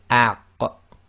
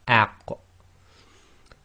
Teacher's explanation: But when you're using it in sarking, it's the opposite. You try to say the beginning of the sound and then you block the throat, so it's aq. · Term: qaf